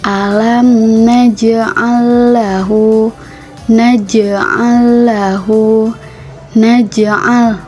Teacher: Terdapat huruf jim yang berharakat sukun berada di tengah ayat maka jim tersebut harus dipantulkan karena memiliki hukum bacaan qalqalah.